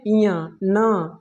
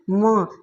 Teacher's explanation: उच्चारण करते समय क्या होता है हमें हल्का नाक पर प्रभाव पड़ रहा है। तो इसीलिए बोला जाता है कि स्पर्शी व्यंजन का जो पांचवा वर्ण होता है ना उसे हम क्या बोलते हैं तो हम नासिक वर्ण बोलते हैं ना।